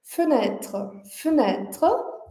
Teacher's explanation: o primeiro e a gente mantém bem curto, bem fraco, bem arredondado. E o último e desaparece, né?